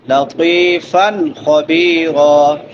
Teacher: فا کے اوپر نون تنوین ہے اور نون تنوین کے بعد حروف حلقی میں سے خا آ گیا ہے تو یہاں پہ اظہار ہوگا